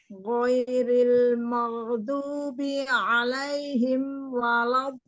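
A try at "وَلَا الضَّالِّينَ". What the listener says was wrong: Iya, panjangnya walau itu berapa panjangnya? Iya, tadi 6-nya kurang. Dan ketika alaihim ghairil maghdu, huruf ghain, angkat lagi pangkalnya. Ghain itu agak makhrajnya sama dengan kho, ya.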